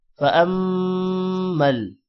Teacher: میم پر شد ہے حمزہ کے ساتھ میم ملے گا اور میم پر غنہ بھی ہوگا. فأمل یتیم فلا الف کی وجہ سے لا تھوڑا لمبا ہوگا.